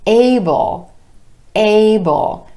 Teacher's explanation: 2 syllables, emphasis on the first syllable, the A vowel sound.